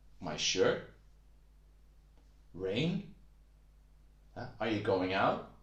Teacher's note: Your voice goes up a bit, so it sounds like a question. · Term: asking a question